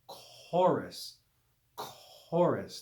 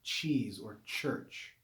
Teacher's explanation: and chorus like chorus chorus not like cheese or church chorus that hard aspirated c sound